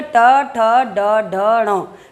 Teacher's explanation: बोल करके देखिए, ट, ठ, ड, ढ, ण। आपकी जीभ पलट करके पीछे गई और पीछे जा करके मुंह के ऊपर वाले भाग को टच किया। · जीभ पूर्ण रूप से पलट गई है। पलटने के बाद ऊपर के भाग को स्पर्श कर रही है। ये वाला जो भाग होता है हमारे मुंह का सबसे कठोर भाग होता है, और इसका नाम है मूर्धा। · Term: मूर्धन्य